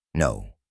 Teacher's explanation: El segundo sonido es O. Este es un diptongo, lo que significa que comienza con un sonido O y termina con una ligera U.